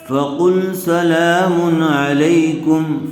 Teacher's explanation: کم علیکم فقل سلام علیکم فقل قاف کو اوپر کیجیے سلام لام کے اوپر کھڑا زبر ہے لام کو تھوڑا کھینچ کر پڑھیں گے